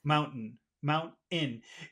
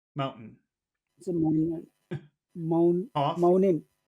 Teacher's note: there is a sound but it's not t it's like a little cough